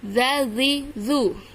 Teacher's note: Gigi seri atas. Ujung lidah ditempelkan di ujung gigi seri atas.